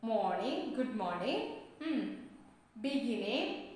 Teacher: The air passes through the nose instead of the mouth. And we have our back of the tongue raised towards the soft palate. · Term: ng sound